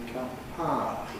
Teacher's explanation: the ow is susceptible to losing its ooh element, its second element. Instead of ow, we just have ah. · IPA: [paə]